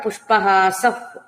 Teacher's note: విసర్గ పకారం అవుతుంది గాలితో ఊదినట్టు గాలి ఊదినట్టుగా